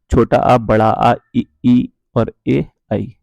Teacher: आवर्तमुखी इसलिए बोलते हैं या फिर अगोलाकार इसलिए बोलते हैं क्योंकि इनके चरण में मुंह होंठ जो है वो गोलाकार नहीं होते